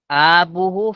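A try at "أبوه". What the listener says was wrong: আবার টান দেয় আতে, এই আবুহু হবে না তো, আবুহু।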